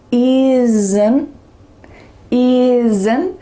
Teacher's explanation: did you hear a little vowel sound that was added in that second negative contraction? · There's a little uh sound added between the S and the N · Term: schwa